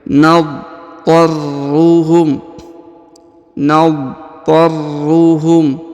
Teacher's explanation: Huruf ra ditahan dan ditekan ya, karena terdapat tanda tasdid.